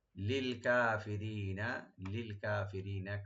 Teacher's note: কাফ open থাকবে, রি একটা টানবেন, নুনে লাস্টে কোনো টান হবে না